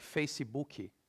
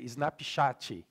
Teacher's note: So in Brazil, we pronounce all the syllables. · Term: syllable-timed language